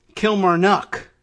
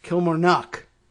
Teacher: There's 2 emphasis on the first and last syllables.